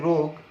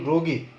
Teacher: তুমি এখানে ওকার দিয়ে যদি যেমন যদি বলো রোগী, রোগ বললে রোগ উচ্চারণটা একটু লম্বা হয়, কিন্তু রোগী, রো বলার সাথে সাথে গি বলতে হচ্ছে তোমার, ফলে তুমি কিন্তু উচ্চারণটা উচ্চারণটা রস্য হয়ে যাচ্ছে।